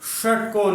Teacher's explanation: देखो इसमें जो हमारी जीभ है वो हमारी मूर्धा से टकरा रही है, जीभ षटकोण तालु के बिल्कुल ऊपर वाले भाग में, अंदर वाले भाग में टकरा रही है, तब जाके इसकी निकल रही है आवाज ये इसलिए इसको बोलते हैं, इसका उच्चारण स्थान है मूर्धा।